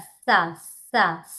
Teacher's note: ఇది సా, దంతాలకి స, స తగలాలి. సకారం. సో దంత సకారం.